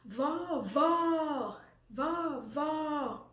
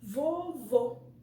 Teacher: Porque nós temos o som bem aberto. Então, a gente abre bem a boca para poder falarmos com o agudo. Já com o circunflexo, não. A gente tem a boquinha um pouco mais fechada, porque nós falamos vovô.